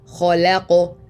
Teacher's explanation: So it goes kha, and then the la is lighter, la, and then qaf is stronger with qalqala.